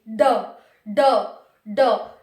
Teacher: जब हम ड और ढ को बोलते हैं, आप भी बोल करके देखना ड और ढ को, जब आप ड और ढ को बोलेंगे तो पहले आपकी जीभ उठेगी, फिर मूर्धा से लगेगी, मूर्धा से लगने के बाद झटके के साथ नीचे आएगी। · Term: द्विगुण व्यंजन